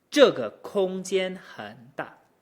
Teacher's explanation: Again, this is a pretty challenging tone pair because the entrance and then that dip, we can't just slide from 间 down to 很